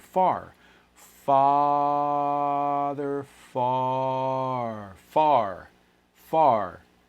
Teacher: there tends to be a little bit of rounding for american accents there